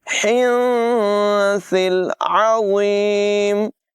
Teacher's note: सा की आवाज़ बग़ैर सीटी के अदा होगी। वा को भी बग़ैर सीटी के पुर अदा करेंगे। · नून साकिन के बाद सा हरूफ़े इख्फ़ा में से है, यहाँ पर नून साकिन की आवाज़ में इख्फ़ा होगा यानी नून साकिन को ज़ाहिर नहीं करेंगे। हिन्सिल नहीं पढ़ेंगे बल्कि इसकी आवाज़ को नाक में छुपाएंगे। हिन्सिल अज़ीम, सा की आवाज़ बग़ैर सीटी के अदा होगी।